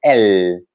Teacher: o L do francês, ele é bem marcado, a língua chega lá no dente, ela é bem encostadinha no dente. L, tem que colocar ela no dente para pronunciar.